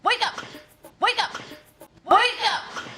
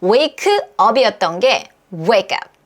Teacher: 여기에 강세가 들어가고요. 그 다음에 K에 강세가 없는 소리는 약간의 된 소리가 나올 수가 있습니다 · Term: 연음